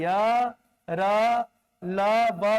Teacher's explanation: क्योंकि यरलव के उच्चारण में स्वर तंत्र में कंपन हो रहा है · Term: सघोष